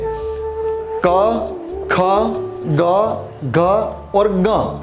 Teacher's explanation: कंठ्य यानी गले से बोले जाने वाले व्यंजन वर्ण, व्यंजन अक्षर